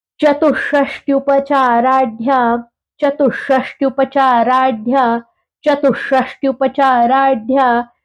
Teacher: आहे की 64 म्हणजे त चतुषष्टी हा जो उपदमानीय शकार आहे ज्याला आपण षटकोनाचा श म्हणतो ज्यासाठी आपली जिभेच टोक आपण टाळूला लावून उच्चार करतो